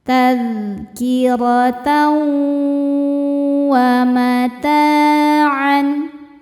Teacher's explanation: ada hukum idgham bi gunnah karena ada tanwin fathah menghadapi huruf waw. Cara bacanya tanwin dileburkan ke waw disertai dengung.